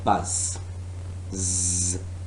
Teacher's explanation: the vocal folds vibrate very rapidly when an airstream is allowed to pass between them producing what is termed voice that is a sort of buzz which one can hear and